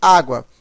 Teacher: A palavra água, eu tenho o U, aqui ele é pronunciado de forma fraca, está ao lado de uma vogal e tem som de U, semivogal.